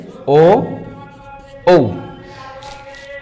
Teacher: এদের উচ্চারণ স্থান হচ্ছে কণ্ঠ আর হচ্ছে ওষ্ঠ